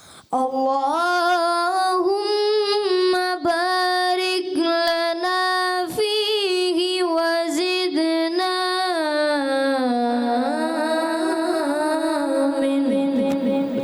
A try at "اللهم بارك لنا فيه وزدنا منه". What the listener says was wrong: اچھا ایک الف سے زیادہ بھی نہیں کھینچنا نا, تو وہ مد نہیں ہے ابھی. اب خوبصورتی تو بڑھ جاتی ہے, جیسے اللہم بارک لنا فیہ وزدنا منہ, تو زیادہ ہو گیا ایک الف سے زیادہ. اللہم بارک لنا فیہ وزدنا منہ.